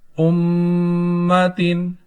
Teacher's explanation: میم مشدد ہے، گناہ کر کے پڑھیں گے